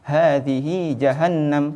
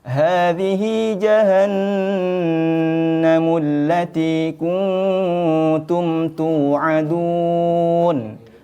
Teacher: didengungkan masuk dengan dengung harus ditahan ditekan seperti contoh Hadi jahanamatiumun pada kalimat jahanam itu harus ditekan harus ditahan harus dilamakan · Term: gunna musyaddadah